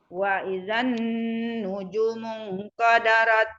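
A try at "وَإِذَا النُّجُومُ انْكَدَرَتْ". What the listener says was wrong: Itunya kurang panjang. Wa izan, zannya dilamain karena nun. Nanti nunnya hidup lagi. Wa izan nujumu kadarat. Nunnya tasdid. Mungkadarat.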